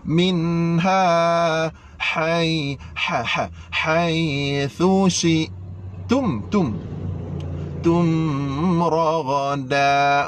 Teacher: Nyatakan nun. Jelaskan nun tanpa dengung. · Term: izhar halqi